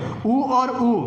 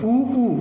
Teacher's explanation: ऊ और ऊ छोटे बड़े दोनों का उच्चारण ओष्ठ से।